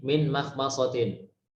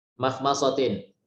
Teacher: Artinya kita harus membaca mim dengan tarqiq, dengan tipis. Tidak boleh ditebalkan walaupun berdekatan dengan huruf yang tebal.